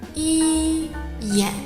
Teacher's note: As you can see here, in Mandarin, the tones for 一眼 are the first tone and the third tone. The first tone starts at a relatively high point and stays there, but the third tone starts from a higher point and goes downward and then upward again immediately.